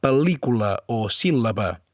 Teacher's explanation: Una altra particularitat del català és la L geminada. S'escriu amb un punt volat. Se pronuncia com dues L's seguides